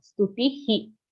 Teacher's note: after ti the visarga is also he sound